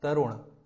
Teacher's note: तो हम जब तरुण कहेंगे तो हमें ना की ध्वनि तो अवश्य आएगी, नासिक्य नाद तो अवश्य होगा, लेकिन हम उसको ना नहीं कहेंगे, ये बिल्कुल गलत है। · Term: नासिक्य व्यंजन